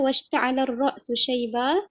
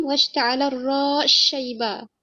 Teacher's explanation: akan idghamkan sin pada huruf shin.